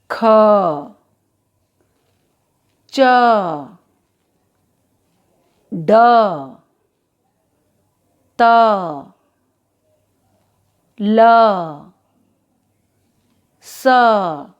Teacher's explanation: हमें हर व्यंजन का उच्चारण करते समय व्यंजन ध्वनि के साथ साथ अ स्वर की ध्वनि भी सुनाई दे रही है